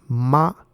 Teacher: when you say ma, it's using a flat tone, which is represented by the flat line on the top row here.